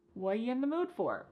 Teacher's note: What are you in the mood for? The word are is gone. And the word you has been reduced to y. So when we link together what and you, it's super fast. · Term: extremely reduced